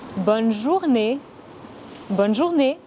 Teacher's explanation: Attention, ce n'est pas bon, mais bonne. Ce n'est pas une voyelle nasale. Le son « et » à la fin du mot « journée » est similaire au son « a » en anglais, mais en plus court.